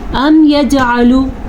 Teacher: توعدون نون کو لمبا نہیں کرنا. ام یجعلو جیم کے اوپر قلقلہ ہو رہا ہے کیونکہ جیم حروف قلقلہ میں سے ہے